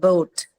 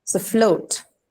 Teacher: Float has a diphthong sound, which is o. The same sound you hear in the word boat.